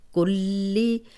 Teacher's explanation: اور اس کو دو حرکات لمبا کریں گے، وَهُوَ عَلَىٰ کلی، اب شد والا حرف ہے، اس پہ تھوڑا سا سٹاپ کر کے اور پھر لام کی زیر کو پڑھنا ہے ، کلی۔ اب یہ شد والا حرف دو بار پڑھا جاتا